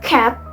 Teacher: Yang keenam ada velum atau soft pelet. Bagian ini menggunakan belakang lidah dan langit-langit lunak.